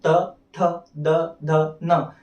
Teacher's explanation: तो अगले जो लाइन है त थ द ध न, इन्हें आप उच्चारण करके देखेंगे तो त थ द ध न, आपकी जीभ आपके दांत से टकराती है इनके उच्चारण के लिए। इनकी ध्वनि जब आप उत्पन्न करते हैं तो आपकी जीभ को आपके दांत का सहारा लेना पड़ता है। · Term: दंतव्य व्यंजन